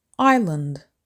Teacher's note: island has two syllables with the stress on the first syllable